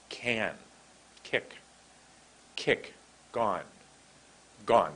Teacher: like a coughing sound hard forcing out of air there's quite a hard forcing out of air let's see these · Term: guttural sound